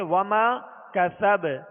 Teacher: وما کا سب با پر زبر ہے، جب ساکن کریں گے تو اس میں بھی قلقلہ ہوگا، مگر حروف قلقلہ میں جب یہ مشدد ہوں، ان پر وقف ہو، تو مزید جو ہے جو قلقلہ ہے اس کی آواز اور زیادہ واضح ہوتی ہے بنسبت اس کے ساکن ہونے کے، یعنی حرکت والے حرف پر وقف کرنے کے.